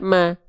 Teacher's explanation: dibaca dengan keadaan tipis karena vokalnya bukan vokal O ya, tapi vokal A.